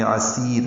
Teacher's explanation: عین وسط حلق سے نکالیں گے، سین صفیر کی پتلی آواز سے ادا کریں گے ، عسیر، صاد نہیں بنانا، یا مدہ ہے، لمبا کریں گے،